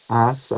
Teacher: Ninguém vai pronunciar o primeiro A exatamente com a mesma força do segundo A, né? Pros ouvintes, eu diria assar, não é assar, é a com o primeiro A mais forte.